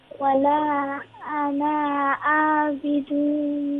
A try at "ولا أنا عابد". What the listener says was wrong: There's no stretch on noon. You know the noon. أنا the alif of أنا is silent. أنا عا. No stretch on the noon.